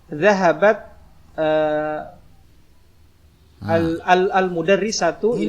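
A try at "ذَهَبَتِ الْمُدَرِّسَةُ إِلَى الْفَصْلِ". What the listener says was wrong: enggak, bacanya disambung. Ats ketemu dengan alif lam. Ats-nya menjadi kasroh. Pertemuan 2 sukun ya.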